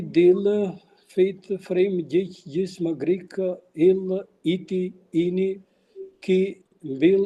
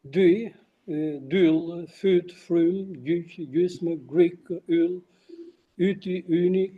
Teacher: one observes the delabialization of U, which becomes E.